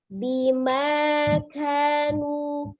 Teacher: ada udara yang mengalir ketika mengucapkan huruf kaf, berbeda dengan qaf yang jahar ya. Tetapi tidak berlebihan. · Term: al-hamas